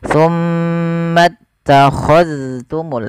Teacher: Ini jangan summa takhadtum, jangan diidghamkan ke huruf ta, tapi zalnya ditampakkan dengan jelas